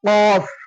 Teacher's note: காஃபும் அடி தொண்டையில இருந்து எடுத்து சொல்லணும்